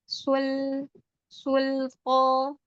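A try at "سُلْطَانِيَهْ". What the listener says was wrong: Lebarin lagi lidahnya, jangan sul.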